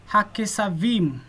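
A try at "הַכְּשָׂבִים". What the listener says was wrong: Right. So we can, that's very nice. It's very nice.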